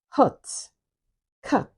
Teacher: it is central because the elevation of the tongue is within the central axis of the tongue. And it is, of course, unrounded, and it is a lax vowel. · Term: vowel number 10